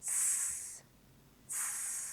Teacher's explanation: There's a very small gap. You're going to push the air through that really small gap, making that hissing sound